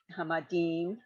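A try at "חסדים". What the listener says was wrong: So that's a samach. That second letter is a samach, not a mem. Hasadim.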